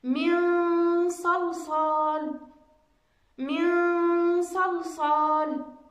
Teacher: النون الساكنة جاء بعدها حرف الصاد، وهو من حروف الإخفاء وأيضا من الحروف المستعلية